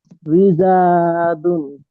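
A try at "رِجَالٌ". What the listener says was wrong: হ্যাঁ মাশাআল্লাহ।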